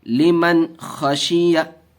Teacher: नून को ज़ाहिर करके बिला गुन्ना के जल्द पढ़ेंगे